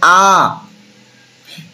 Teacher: যে সকল স্বরধ্বনিগুলো উচ্চারণ করার সময় আমাদের মুখ সম্পূর্ণভাবে ফাঁক থাকে খোলা থাকে তো সেটা হচ্ছে বিবৃত